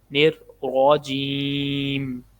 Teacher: را کو موٹا پڑھنا کیونکہ را کے اوپر زبر ہے